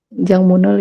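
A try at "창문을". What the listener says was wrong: Ini dibacanya Changmun ya, bukan Jangmun. Changmun.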